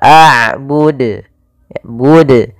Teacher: Ma'abud, ini nambahkan hamzah. Harusnya tidak boleh ditambahkan hamzah, tetap dijelaskan qalqalahnya.